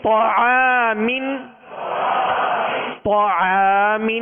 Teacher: تو کو پر کریں گے، عین باریک ہے، عین کے ساتھ الف ہے، عین کی وجہ سے الف بھی باریک پڑھیں گے